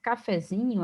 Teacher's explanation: Cafezinho, a sílaba tônica é zi